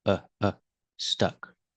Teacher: when you say stuck use the short uh sound like cup and up it's relaxed